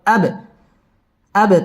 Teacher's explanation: হুয়াল আব বা কলকলার হরফ ধাক্কা দিয়ে পড়তে হবে।